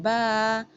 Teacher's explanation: با ہونٹوں کے گیلے حصے آپس میں مل رہے ہیں تو ادا ہو رہا ہے با